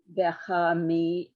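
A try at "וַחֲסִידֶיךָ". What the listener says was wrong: Oh, that's a samach, not a mem. It's a samach. Yoducha Adonai kol ma'asecha v'chasidecha yevarchucha.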